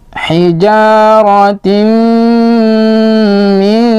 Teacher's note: Idgham bi gunnah artinya melebur sambil berdengung masuk kepada huruf mim.